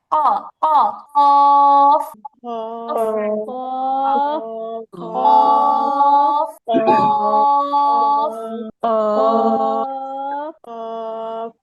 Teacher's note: তো এখন ওই যে ছোট একটা আলা জিহ্বা আছে, কফ বলার সময় ওইখানে সামান্য একটা ধাক্কা লাগে। আমরা যখন কফ উচ্চারণ করি, জিহ্বার ভিতর দিক থেকে একটা সামান্য ধাক্কার মতন লাগে।